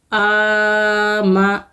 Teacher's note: آ کو کھینچیں گے، میم کو نہیں کھینچیں گے